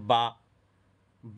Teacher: با نکلتا ہے دونوں ہونٹوں کے بیچ سے